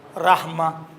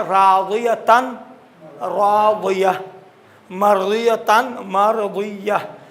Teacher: हा सख्त, इसको कहते हैं हा सख्त, रहमा हा सख्त में तब्दील होगा, रहमा। इसी तरह राज़ियतन, राज़िया, मर्ज़ियतन, मर्ज़िया। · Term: वक़्फ़ इब्दाल